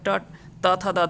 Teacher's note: ट थ द ध जो होता है वो दंत से होता है।